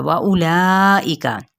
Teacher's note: ला पे 4 हरकत लंबा करते हुए हमजा की ज़ेर को वाज़े करेंगे, और काफ की हरकत को लंबा नहीं करेंगे।